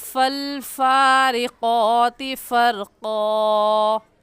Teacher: اپنے اوپر والے دانتوں کی نوک نیچے والے ہونٹ کی اندرونی تری کو لگانے سے فا نکلتا ہے، اور ایسے ہوا نکلے گی فا نکلتا ہے. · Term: فا کا مخرج